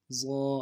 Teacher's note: مخرج زبان کو اوپر کے تالوں سے لگانا ہے اور زبان کا بیچ بھی اٹھانا ہے۔ ضا، کھڑا زبر ضا، ضا، الف مدہ، ایک الف مقدار میں کھینچنے۔ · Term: موٹا